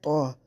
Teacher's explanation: یہ طا یہ مستعلیہ والا ہے، اس کو ہم نے مستعلیہ کی طرح ہم نے اس کو موٹا کرنا ہے